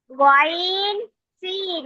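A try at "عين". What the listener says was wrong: কয়েন কেন? কয়েনটা তো গোল হবে না এমন। কয়েন হলে আইনের উপর এক ফোঁটা হইতে, আইন না তো এটা। দেখুন তো ওটা গোল, গোলের উপর এক ফোঁটা হলে কি হয়?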